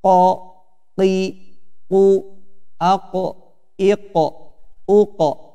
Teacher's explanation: Yang pertama ada huruf qaf, yaitu di pangkal lidah paling belakang.